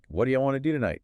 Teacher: It almost becomes one long flowing sound. What do you melt into wadaye or wuju, and want to famously becomes wanna.